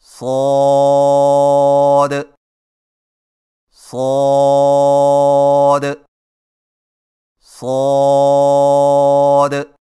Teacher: زبان کی نوک کو ثنایا سفلی کے کناروں سے مضبوطی سے لگا کر اور زبان کے پچھلے حصے کو تالو کی طرف بلند کرتے ہوئے موٹی اور سیٹی جیسی آواز میں پڑھیں